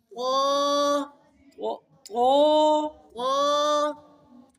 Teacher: طا تو کے ساتھ الف بھی موٹا ہو